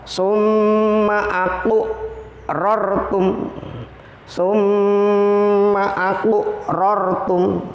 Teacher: cara membacanya adalah dengan pantulan yang tidak terlalu kuat dan getarannya kecil atau sedikit. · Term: qalqalah sughra